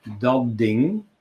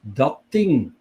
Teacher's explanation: Whereas in the Flemish dialects, you get the opposite combination, dat ding. So the dat retains its unvoiced characteristic, and the second word adapts, becomes unvoiced, whereas the consonant is originally voiced.